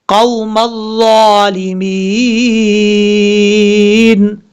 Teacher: گا، قوم الظالمین، یہاں پہ ہم کیونکہ سٹاپ کر رہے ہیں، یہ یا مدہ ہے الف کی مقدار لمبا کر کے پڑھیں گے ، اور جب یہاں پہ رکیں گے تو نون ساکن ہو